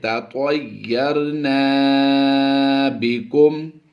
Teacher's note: طا یا زبر طوی، یا لین ہے، لمبا نہیں کریں گے